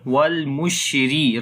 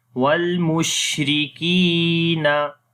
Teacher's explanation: Wal mushri, ra we read in light sound.